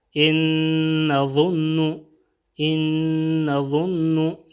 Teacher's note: یہاں پہ بھی ادغام بھی ہوگا اور غنہ بھی ہوگا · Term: ادغام بالغنہ